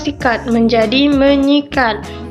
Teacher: fonem es pada kata dasar sikat itu diluluhkan dan disenyawakan dengan fonem nasal NY yang ada pada prefikme itu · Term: peluruhan fonem, peluluhan fonem